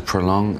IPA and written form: pɹoʊˈlɔŋ (Prolong)